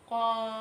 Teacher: Qafnya kita baca panjang sebanyak 6 harokat.